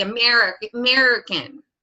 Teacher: It's very, very nasal. A lot of people in the Midwest will say American. And it's very nasal.